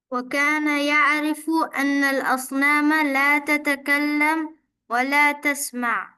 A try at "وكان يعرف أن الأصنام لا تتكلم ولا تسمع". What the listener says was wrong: হ্যাঁ, লা তাতাকাল্লাম ওয়ালা তাসমা, সাকিন করা যাবে না, সাকিন করা যাবে না, বলতে হবে লা তাতাকাল্লামু ওয়ালা তাসমাউ।